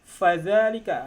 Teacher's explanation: Fa itu ada makhrajnya di syafah ataupun di bibir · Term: huruf fa